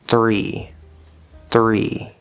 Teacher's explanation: Notice that as I'm doing that TH sound, my lips are already kind of coming out for that R, which is optional for the sound, but can really help you get a nice good R sound.